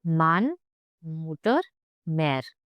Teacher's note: close your lips and let it through your nose